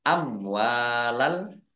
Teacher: mim sukun bertemu dengan huruf wawu, bacaan idhar safawi, dibaca jelas. Wawu fathah alif mat tobi'i.